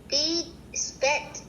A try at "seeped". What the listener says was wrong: No, you just read that word. The P is not here. This is how you would say sped. S-P-E-D. But it's the word what? Seeped.